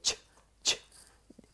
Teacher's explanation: when you say ch, ch, a puff of air comes out of your mouth